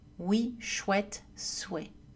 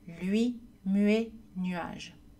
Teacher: quand ou et U sont suivis d'une autre voyelle elles aussi sont prononcées rapidement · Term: le glissement